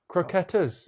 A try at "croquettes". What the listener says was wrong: croquets. You're pronouncing it how it's spelt, but it's croquets. Is how you pronounce it.